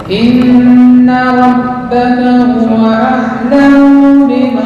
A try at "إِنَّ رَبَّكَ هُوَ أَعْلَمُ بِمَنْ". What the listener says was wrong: Mu pendek. A'lamu biman, a'lamu biman.